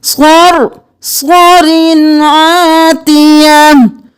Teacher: وَأَمَّا عَادٌ صَرْصَرٍ عَاتِيَةٍ، صرصر نہیں کرنا، یہاں پر آگے حروف ہلکی میں سے عین ہے، ہم اظہار کریں گے